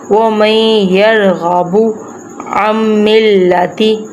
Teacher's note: یہ دیکھیں جیسے کہ میم نون کے ساتھ نہیں یا کے ساتھ اٹیچ ہو رہا ہے، جیسے کہ نون ساکن ہے تو ہم نے نون ساکن کو نہیں، ہم نے یا تشدید کو ملانا ہے، میم کو یا تشدید کے ساتھ ملانا ہے، نون ساکن کے ساتھ نہیں ملانا · ساکن والا نون ہم نہیں پڑھیں گے، ہم تشدید کے ساتھ اٹیچ کریں گے، ہم ساکن کے ساتھ نہیں کریں گے۔